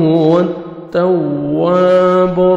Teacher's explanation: آپ نے واو کو کھینچنا ہے اور واو پہ لپس کو راؤنڈ میں لے کے جانا ہے تاکہ واو اچھی طرح ادا ہو.